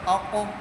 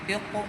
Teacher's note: قاف حروف قلقلہ میں سے ہے، تو اس میں قلقلہ خوب ظاہر ہوگا۔ کیونکہ قاف ساکن ہے۔